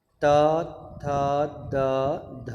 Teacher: इसके बाद दंत्य है, त वर्ग का उच्चारण स्थान दंत्य है। त थ, जैसे ही हम बोलेंगे, बोलने से पहले ही हमारी जीवा दांत पे आके टिक जाती है।